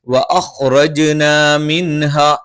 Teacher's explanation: സുക്കൂനുള്ള നൂനിന് ശേഷം ഹ വന്നു. ഇൽഹാറാണ്, വ്യക്തമായി പറയണം